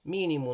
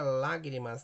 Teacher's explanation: as duas palavras nós temos situação de proparoxítona, que é a antepenúltima sílaba mais forte